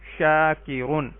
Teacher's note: الف سے پہلے شین کے اوپر زبر ہے تو یہ الف مدہ ہے، اس کو ایک الف کے برابر مد کریں گے، لمبا کریں گے.